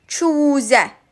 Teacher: U saiti uzun tələffüz olunur və qapalı saitdir